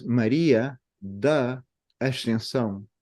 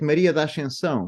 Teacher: we even unite the da with Ascensão and open the A instead of da Ascensão is da Ascensão.